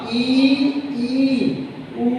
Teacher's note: ठीक है, तो जैसे हम उच्चारण करते हैं ई का, ई ऊ, इनके उच्चारण ऐसा लगता है कि जैसे हवा जो है वो मुख से जबरदस्ती बाहर निकली हो। ठीक है, यानी मुख जो है वो न के बराबर खुलता है, बहुत थोड़ा खुलता है।